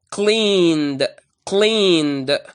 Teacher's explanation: It's the d sound. I pronounce the ed at the end of the verb as d when I find before it a voiced sound.